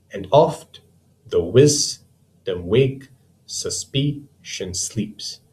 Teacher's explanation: I hope by now you can see that this line is made up of 10 syllables, and these 10 syllables can be broken up into 5 pairs, and in each pair there's an unstressed followed by a stressed syllable. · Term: iamb